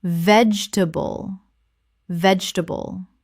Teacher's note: Three syllables in natural speech. The middle syllable almost disappears. Example, she grows her own vegetables in the garden and there is always something fresh on the dinner table.